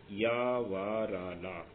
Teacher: इनके समय पर स्पर्श तो करती है जीव, लेकिन कम करती है, इसलिए इनको ईषत स्पृष्ट कहा जा रहा है।